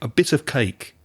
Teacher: the of almost disappears that off becomes so weak a bit of cake you almost can't hear it and a